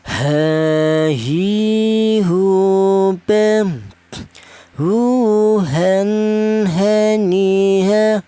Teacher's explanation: Huruf H ini keluarnya huruf berasal dari pangkal tenggorokan. Pangkal tenggorokan itu penggorokan bagian bawah, yaitu ditutupi dua huruf ya.